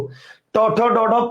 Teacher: ট ঠ ড ঢ পশ্চাৎ দন্তমূলীয়